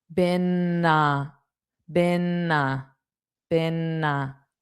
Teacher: So, make sure you hold out that n before you say a.